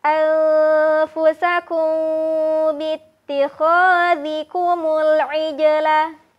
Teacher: Huruf jim sukun dibaca dengan cara memantul. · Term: huruf qalqalah